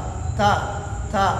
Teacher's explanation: تا کے اندر صفت ہمس ہے، قا کے اندر نہیں ہے